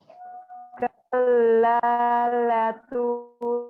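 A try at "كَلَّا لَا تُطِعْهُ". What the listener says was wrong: La-nya panjang dong.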